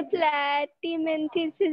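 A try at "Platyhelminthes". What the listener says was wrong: प्लैटीमेंथिस नहीं रे, हां प्लैटी हेलमिंथस. Why do you remove that हेल from there? It is प्लैटी हेलमिंथस. Helminth मतलब worm, ऐसे याद रख. इसलिए we had Aschelminthes, प्लैटी हेलमिंथस, दोनों में हेलमिंथ आते.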